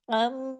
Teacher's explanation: میم پہ تشدید ہے، ڈبل میم ہے، آواز دیر تک ناک میں چھپے گی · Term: غنہ